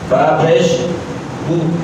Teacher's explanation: جب پیش میں ہم ہونٹ گول کریں گے تو پھر پیش کی آواز مجہول نہیں ہوگی